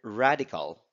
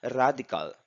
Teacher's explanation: Philippine English is rhotic, but the local R is an alveolar flap, not an American English retroflex.